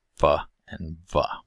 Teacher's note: Lips are also involved in our labiodental sounds, where the lower lip moves against the upper teeth for f and v.